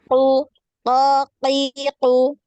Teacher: dengan langit-langit yang lunak yang paling belakang